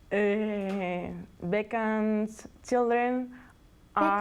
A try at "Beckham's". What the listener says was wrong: Beckham with an M.